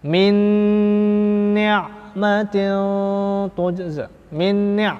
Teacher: idgham kamil sempurna, dengungnya melebur jadi satu antara huruf dan sifat-sifatnya